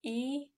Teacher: vokal tak bulat yang kita ucapkan dengan bentuk bibir yang tidak bulat